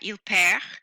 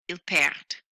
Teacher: You'll hear the letter D in the middle there, which means you do hear a difference between singular il perd and plural ils perdent.